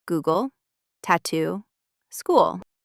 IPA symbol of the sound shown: u